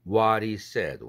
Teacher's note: H 날라갔죠? 그러면 t가 플랩되고 링크돼야 되죠.